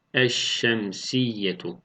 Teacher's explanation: tariften Sonra Şemsi harflerden biri gelirse idğam-ı şemsiye gerçekleşmiş olur yani lam harfi Şemsi harfe idğam edilir ve şeddeli bir harf olarak okunur